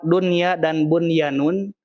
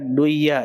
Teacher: Ya, yang harusnya nun sukun menghadapi ya itu harusnya idgham bigunah. Tapi untuk kalimat dunya dan bunyanun dia khusus tidak dibaca duya atau buyanun tidak, tapi dia dibaca izhar